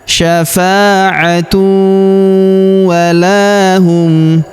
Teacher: Huruf la kita panjangkan 2 harokat karena terdapat alif di depannya.